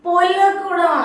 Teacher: ആ ന് എന്ന് പറയുന്ന ശബ്ദവും ഖരവും കൂടെ ചേരുമ്പോൾ നമുക്ക് ല് എന്ന് പറയുന്ന ശബ്ദം ഉണ്ടാവും